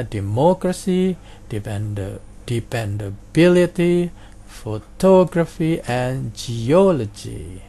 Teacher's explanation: penekanan pada antepenultimate syllable atau suku kata ketiga dari akhir